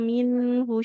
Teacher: kalau yang minhu dia harakat dommah. Karena tidak ada wau di depannya maka tidak boleh dipanjangkan